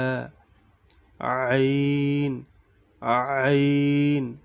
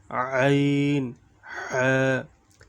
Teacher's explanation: দুই নাম্বার মাখরাজ হলকের মধ্যখান হইতে আইন হা